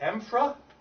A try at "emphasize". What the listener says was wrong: So somehow you guys have gotten this word wrong. You think there's an R after the E-M-P-H? There's not.